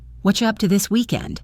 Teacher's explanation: In fast speech, again, what are you becomes whatcha.